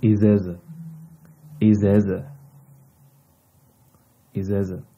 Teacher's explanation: Okay, here it is like, if we write it in Arabic, in Egyptian dialect, if we write it, we write it with kaf, okay, which is like you, but we don't pronounce the kaf, we just say like glottal stop